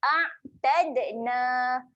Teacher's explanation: Ain ketika mati sifat dia tahan. Okay, jangan lantunkan. Tahan bunyi ain mati. Tahan dekat tengah kerongkong.